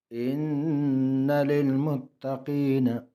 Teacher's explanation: لل دونوں لاموں کو باریک پڑھیں گے